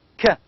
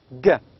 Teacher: k is velar stop voiceless sound, and g is velar stop voice sound